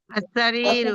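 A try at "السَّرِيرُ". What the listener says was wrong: প্রথমে প্রথম অক্ষরটা তাসদিদ যুক্ত হবে, প্রথম অক্ষরটা তাসদিদ যুক্ত হবে। আস-সারিরু, আস-সারিরু, সারিরু।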